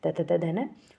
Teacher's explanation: फिर जो दांत से बोले जाने वाले हैं मतलब जो हमारी जीव है वो किसको टच करती है? दांत को टच करती है। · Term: दंत वर्ण